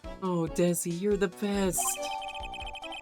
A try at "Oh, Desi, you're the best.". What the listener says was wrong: It's not pathetic enough. It needs to be like,